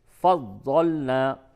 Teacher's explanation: ضاد کی ادائیگی میں زا یا دال بالکل نہ ہو بلکہ داڑھ سے فضلنا ادا کریں۔